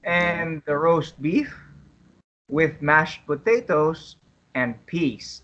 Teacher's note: notice that tomato soup, roast beef, mashed potatoes, and peas are stressed because the food order is the important information here